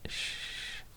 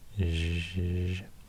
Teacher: So these are articulated in the front of the mouth, close to the teeth, or actually at the teeth, just behind the teeth. And then it's the voiceless sh and the voiced zh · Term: post alveolar fricative